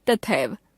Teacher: उदाहरण के लिए तथा एव शब्दों का मेल होने पर तथा शब्द की अंतिम ध्वनि आ तथा एव शब्द की पहली ध्वनि ए परस्पर मिलकर ऐ हो जाती है और शब्द बनता है तथैव। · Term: संधि